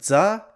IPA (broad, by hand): dz